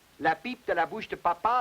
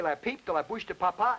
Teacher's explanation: The Frenchman's P, for instance, initially, as I showed you in the last program, is not aspirated. In other words, when he says, la pipe de la bouche de papa, there is no air.